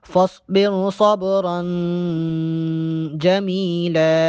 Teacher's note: فاصبر صوت کو موٹا کر کے پڑھیں گے